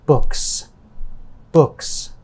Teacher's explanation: book ends in a k sound it is a voiceless sound when it is plural the letter s is pronounced as a s another voiceless sound · the word book ends in a k sound it is a voiceless sound when it is plural the letter s is pronounced as a